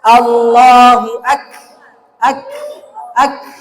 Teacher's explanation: huruf Kaf pengucapannya adalah ada udara yang keluar